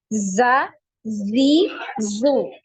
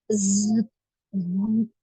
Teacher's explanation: kalau huruf Zai menyerupai suara lebah Z gitu ya seperti itu Jadi ada suara ee desis ya suara aliran suara yang tajam ya